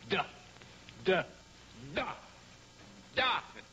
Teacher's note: Sans doute, la consonne D, par exemple, se prononce en donnant du bout de la langue au-dessus des dents d'en haut.